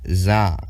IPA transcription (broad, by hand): z